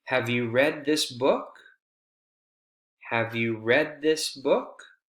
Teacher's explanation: read this book have you read this book Focus word read after the focus word we have continuing Rising intonation